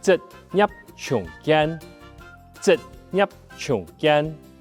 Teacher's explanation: 职业的业有一个舌根音的声母，而且还要把嘴巴闭起来哦